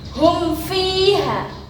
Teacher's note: Pembacaannya harus jelas seperti idhar, jangan sampai teledor. Kalau teledor, maka dia akan menjadi ikhfa. Karena huruf fa ini berdekatan dengan mim sifatnya. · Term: idhar syafawi